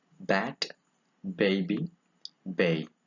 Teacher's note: It is a voiced bilabial.